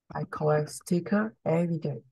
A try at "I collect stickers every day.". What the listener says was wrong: Stickers. The S is very important, okay? You have to say it. I know in Vietnam you don't say the S, but in English you have to, okay? I collect stickers every day.